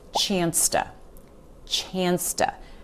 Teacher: The word to, also when it's surrounded by words or between two other words, reduces to ta. So you won't hear us say to, you'll hear us say ta. · chance and to here, they just flow together